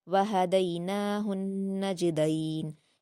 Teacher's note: جیم پر قلقلہ کریں گے، دال کو معروف پڑھیں گے